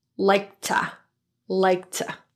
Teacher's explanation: since there's another plosive stop consonant right next to it, the K is unreleased.